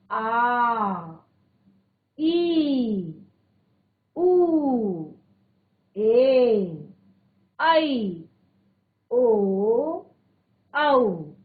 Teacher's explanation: जिनके उच्चारण में ह्रस्व स्वर की अपेक्षा दुगना समय लगता है उन्हें कहते हैं दीर्घ स्वर